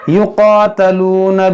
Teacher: क़ाफ़ हुर्फ़ मुश्तलिया है, फिर खड़ा ज़बर, तो खींचेंगे, इसको मोटा भी करेंगे